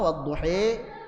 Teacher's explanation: Jadi ada yang fathah wadduha tegak ada yang miring dikit wadduha takqlil atau imalah sugra. Ada yang miringnya banyak yang betul-betul pertengahan antara fathah dan kasrah. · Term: imalah kubra